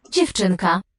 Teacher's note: You'd expect eng before a K, but you don't get that assimilation.